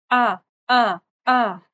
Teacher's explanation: ہمیشہ، متحرک الف جو ہوتا ہے وہ حمزہ ہوتا ہے، تو حمزہ کا یہ بھی اقصی حلق سے نکلتا ہے، باریک آواز ہے